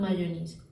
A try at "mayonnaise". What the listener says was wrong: You have unnatural vowel sounds and you're saying things like mayonnaise. That would never happen in English.